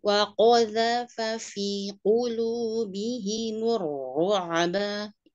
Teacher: qafnya yang isti'la ya, zalnya tipis.